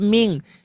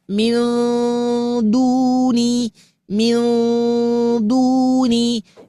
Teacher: Bunyikan huruf n-nya samar, masukkan kepada makhraj huruf dal. Begitu. Nah, jadi tidak ming.